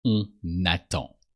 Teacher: When you have a word that starts with a vowel, just after on, you pronounce the N.